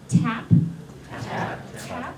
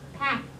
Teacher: you should feel a little puff of air coming out after that T. So that's called aspiration.